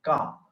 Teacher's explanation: C part is unvoiced uh but unaspirated unaspirated means when you speak uh your air is not know